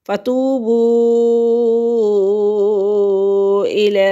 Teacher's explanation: حروف مدہ پر لفظ ختم ہے، یہ مد منفصل کا سمبل ہے۔ اگلا لفظ جو ہے وہ حمزہ سے شروع ہو رہا ہے تو یہ مد منفصل ہے اور اس کو 3 سے 5 الف تک لمبا کریں گے